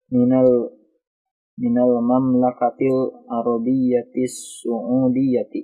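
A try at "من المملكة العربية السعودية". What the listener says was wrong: Iya, bisa su'udiyati. Kalau di sini sa'udiyati ya. Minal mamlakatil arabiyyatis sa'udiyati.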